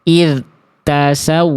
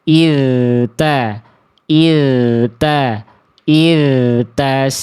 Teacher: Maka tadi saya sampaikan di sini juga di dzal sukun tadi ya, bunyi dzalnya pastikan terus mengalir ya dengan jelas, aliran suaranya tanpa ada jeda hening antara dengan ta. Sehingga bukan dibaca id tasawwaru, tapi jelaskan dulu dzalnya irta irtasawwaru. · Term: rokhawah